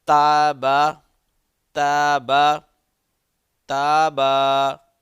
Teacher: اب دیکھیں پہلے ہم لوگوں نے صرف با کے اوپر زبر تھا تو اس کو با پڑھا، اب با زبر الف ہے یعنی کہ حروف مدہ میں سے الف بھی ساتھ آ گیا، تو اس کو تھوڑا سا ہم ذرا لمبا کر کے پڑھیں گے